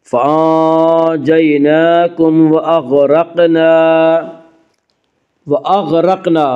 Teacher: غین کو پر پڑھیں گے، غین حروف مستعلیہ میں سے ہے